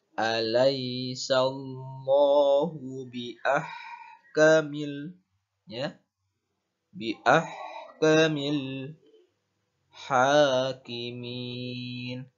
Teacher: ha ketika berharokat sukun maka harus jelas dalam melafalkannya seperti mengeluarkan nafas.